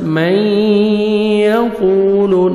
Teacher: کے ساتھ، من یقول، نوز میں ساؤنڈ لے کے جائیں گے، قاف کو موٹا کر کے پڑھیں گے ، واو مدہ 1 سیکنڈ آپ نے قاف کو کھینچنا ہے،